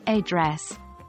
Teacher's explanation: For words like address, Americans stress the second syllable, making it sound like address, whereas other English dialects might stress the first syllable. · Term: word stress, Word stress